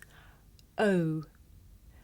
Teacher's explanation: this is a diphthong a double vowel sound the shape the mouth makes changes from the beginning of the sound to the end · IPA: /əʊ/